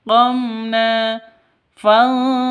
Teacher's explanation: qomna fantaqomna seperti itu izhar safa izhar syafawi na panjang dua ketukan karena ada alif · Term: mad asli